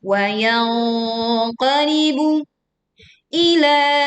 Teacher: terdengar ang dan angnya ang tebal karena di depannya ada huruf qaf ya, makhraj qaf yang makhrajnya adalah di pangkal lidah dan dia bersifat tebal atau isti'alah. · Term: dengung